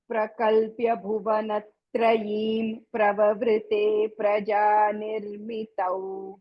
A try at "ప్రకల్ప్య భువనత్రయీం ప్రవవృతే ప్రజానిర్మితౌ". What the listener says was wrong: మళ్ళీ ప్రజా దగ్గర పకారం ఎక్కువ పకారాలు చెప్పాలి.